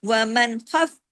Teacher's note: باریک حروف ہیں، جماؤں کے ساتھ پڑھنے باریکی کے ساتھ، ومن، اظہار ہوا کیونکہ آگے خا ہے